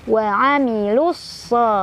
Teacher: Wa amilus ada alif lam syamsiyah karena ada alif lam ketemu sama huruf syamsiyah yaitu shad. Cara bacanya langsung masukkan ke huruf shad. Jadi alif lam gak dibaca. Jadi jangan dipanjangin dulu wa amilu ya, di lu ya.